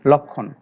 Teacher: কারণ হচ্ছে যে এই যুক্ত ব্যঞ্জন ক্ষীয় এর সাথে আরেকটি বর্ণ যুক্ত হয়েছে, এই জন্য এই ল এর সাথে যে অ রয়েছে সে অ এর উচ্চারণটা অবিকৃত থাকবে